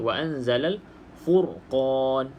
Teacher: kita baca ra ni dengan bacaan tebal dengan bacaan tebal · Kemudian dekat sini ra ni, ra sukun sebelumnya berbaris di hadapan, maka kita baca ra ni dengan bacaan tebal.